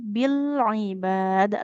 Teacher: lam sukunnya enggak boleh memantul ya.